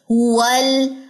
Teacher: जुबान के किनारे द वाहिद के मसूड़ों तक जाते हैं